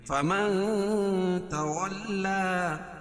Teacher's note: کھڑا زبر قائم مقام الف مدہ کہ اس کو ایک الف کے برابر کھینچ کے پڑھیں گے